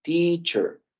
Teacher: la e no la pronunciamos como e la pronunciamos como y